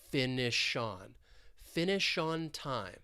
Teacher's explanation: It's like we're taking that final SH sound and we're moving it over to that preposition. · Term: linking